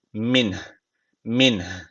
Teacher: hafif bir nefes verme sesi veriyoruz en sonunda min min dedikten sonra nefes veriyoruz min bu şekilde devam edelim